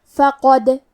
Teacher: کلمت فقد میں حرف دال پہ جزم ہے، یہاں دال کا حکم ہے قلقلہ تو ہم یہ حرف کو ہلاتے ہوئے یہ کلمہ کو پڑھیں گے